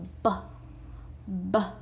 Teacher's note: you feel your throats vibrate right so it's a voiced sound